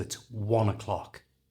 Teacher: Try and make that schwa sound that's taking the place of the O as soft as you possibly can, but it's still got to be there.